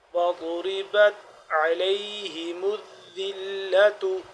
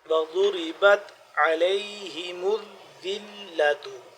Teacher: اسی طرح ضاد وہ موٹا اور مخرج اس کا جس طرح سے ہے ویسے ادا کرنا ہے، یعنی کہ زبان کی کروٹ کو داڑوں کے اوپر والی داڑ کے ساتھ ٹچ کر کے تو پھر ضاد کا ویسے ادا ہوگا